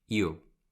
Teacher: Es igual que si ahí pusieras una I latina y unieras con la U y dijeras IU, pero muy rápido